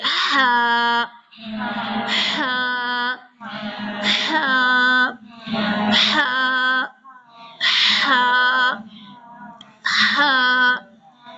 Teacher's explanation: ٹھنڈی سی سانس آپ کے حلق کو پتہ چل رہا ہوگا کہ یہاں سے کچھ نکل رہا ہے · حلق وسط حلق سے یہ ادا ہوتا ہے جی۔ اپنے اپنے حلق پہ اگر آپ دیکھیں 3 یعنی کہ آپ کے حلق ہوں گے، جو کہ یہاں تصویر کے اندر پورا حلق دیا ہوا ہے، ٹھیک ہے۔